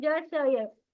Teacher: और हमने क्या देखे, जुबान के बीच से है ज श य, यानी कि जुबान के बीच से ही इसका एग्जिट है। इसका मखरज क्या है? जुबान का बीच, ज श य, ऊपर के तालु से लगने से